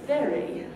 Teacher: the top teeth are resting on the bottom lip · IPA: [v]